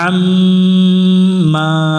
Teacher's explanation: আইন মিম জবর আম, আইন অক্ষর গলার মধ্য থেকে একটু চেপে পড়বো, মিমের উপর তাসদিদ আছে, গুন্না করবো, এটা ওয়াজিব গুন্না। মিম জবর, মিম আলিফ জবর মা, জবরের বামে খালি আলিফ আছে, এক আলিফ টান দিয়ে পড়বো আম্মা।